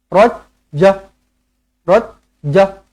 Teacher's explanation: Pastikan berhenti pada ja ini dibaca dengan 2 harakat. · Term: mad'iwat